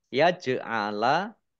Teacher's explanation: jim sukun bacaan kolkolah dibaca memantul